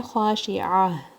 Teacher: تا مربوطہ پہ جب آیا اینڈ ہوتی ہے، جب وقف کرتے ہیں تو پھر ہا کی ساؤنڈ میں ٹرن ہو جاتا ہے